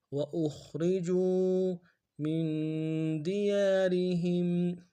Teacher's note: خا کو موٹا ادا کریں گے، را کو باریک ادا کریں گے